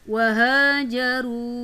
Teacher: ha berbaris fathah bertemu dengan alif maka dibaca panjang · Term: Mad Thobi'i